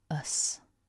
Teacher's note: we've got the weak schwa followed by a s